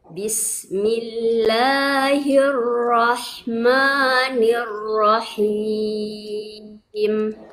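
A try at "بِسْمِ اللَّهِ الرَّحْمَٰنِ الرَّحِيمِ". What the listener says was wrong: Itu huruf ro-nya masih kurang dan naik pangkal lidahnya, Bu. Masih hirlo. Itu ketika hirlo ujung lidahnya di mana? Itu berarti di gusinya. Atas lagi, berarti setelah gusi terus ke atas lagi gitu. Ya, hirlo.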